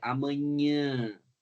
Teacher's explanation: A epiglote está aberta esse som também vai pra cavidade nasal a corrente de ar ela também passa pela cavidade nasal produzindo o som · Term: som nasal